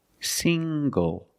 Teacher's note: The ng makes the nasal sound plus the hard g.